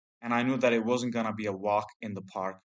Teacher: he joins consonant sounds to vowel sounds and drops consonant sounds like T at the end of words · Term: connected speech